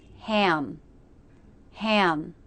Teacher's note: you can hear the UH sound as my tongue relaxes down in the back before the lips close for the M sound.